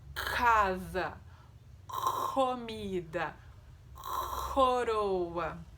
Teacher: ele é um som linguovelar, ou seja, a gente utiliza a parte posterior da língua encostada lá na parte posterior do palato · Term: som K